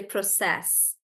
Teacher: when you're processing something you say process so the stress is more towards the end